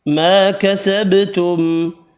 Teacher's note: کسبت ولکم، میم مشدد پر غنہ کرنا ہے۔ ما کسبتم، الف مدہ 1 الف کی مقدار میں کھینچ کر پڑھیں گے، با ساکن پر قلقلہ کرنا ہے، میم کا اظہار ہوگا ملانے کی صورت میں۔